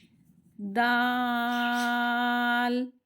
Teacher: ज़बान की जो टिप है, जो नोक है, जब ऊपर वाले जो दो दांत हैं उसकी रूट में, जड़ से लगे, तब अदा होता है। और इसे भी बारीक पढ़ते हैं, नहीं अगर इसको मोटा कर दिया तो वो दौद हो जाएगा, तो इसको भी बारीक पढ़ेंगे। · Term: हुरूफे नितिया